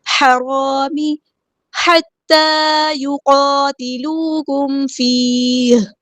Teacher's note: ہا کو وسطی حلقے کے مڈل تھروٹ سے ادا کرنا ہے